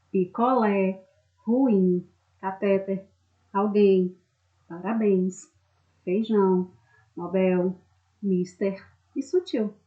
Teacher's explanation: Essas palavras todas são oxítonas, ou seja, a sílaba tônica é a última. Quando ela já se apresenta acentuada, tranquilamente você identifica, como na palavra picolé, na palavra parabéns, né?